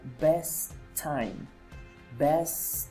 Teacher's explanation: Two words, the first one ends with t and the second one starts with t. It means that we're going to put the sound together and it's going to sound like best time.